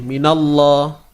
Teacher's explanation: Kalimah Allah sebelumnya baris atas, tebal.